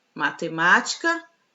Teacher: Última, penúltima, antepenúltima. Então, a antepenúltima sílaba da palavra matemática é a sílaba tônica. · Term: proparoxítona